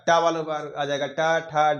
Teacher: आप बोलकर देखिए, हमारी जबान का अगला जो हिस्सा होगा वो आपके तालु में आगे, तालु के भी आगे के हिस्से में टकराएगा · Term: मूर्धन्य व्यंजन